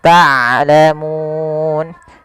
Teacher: Hati-hati jangan dibaca taklamun. Taklamun ini sering terjadi mengganti huruf ain dengan huruf hamzah. Harusnya dia ain dari tengah tenggorokan kita.